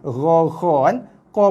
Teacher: qaf juga bersifat isti'la meninggi ketika dilafazkan. Macam juga sifat bagi huruf kha dan ghain tadi.